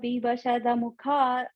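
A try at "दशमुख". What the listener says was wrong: There. That's what you missed. You're saying the mukha. You're saying missing the sh.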